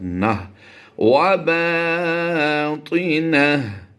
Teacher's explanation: गोल ता को हा साकिन से बदलना है, यानी नुक्ते भी ख़त्म हो जाएंगे और 2 ज़बरे भी ख़त्म होके जज़म की अलामत यहाँ आ जाएगी और यहाँ पर पढ़ा जाएगा नून हा ज़बर नह व बातिनह।